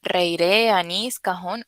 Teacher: las palabras agudas éstas tienen el acento en la última · Para indicar la tilde en las palabras agudas, estas tienen el acento en la última sílaba y normalmente terminan en una vocal, A, E, I, O, U, y en consonantes como la N y la S.